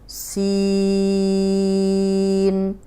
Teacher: سین میں سی کو لمبا کریں گے، سی کو، جیسے انگلش کا سی ہے نا، اے بی سی، سی کو لمبا کریں گے۔ سین اینڈ میں چھوٹی سی نون کی آواز آئے گی